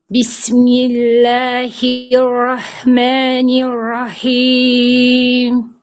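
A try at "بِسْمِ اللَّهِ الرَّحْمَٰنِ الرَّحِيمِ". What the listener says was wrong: Endi h harflaringiz umuman chiqmabdi. Rohmanir rohim deyapsiz. Boru mana shu halqqumni o'rtasidagi h harfi.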